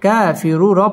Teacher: কাফ খারা জবর কা এক আলিফ টেনে পড়তে হবে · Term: তাবাই